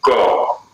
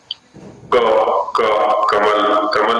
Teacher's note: क जिह्वा मूल से है